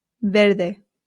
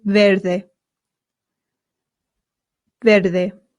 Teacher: the V in Spain makes a light B sound. Verde. However, in Latin America, it does make more of the English V sound